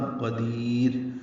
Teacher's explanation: دال کو باریک پڑھیں گے، لمبا کریں گے، را باریک پڑھیں گے وقفاً